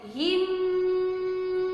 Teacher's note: mim sukun bertemu dengan huruf ba, ditahan 3 harokat, dinamakan ikhfa syafawi. termasuk ke dalam hukum mim sukun.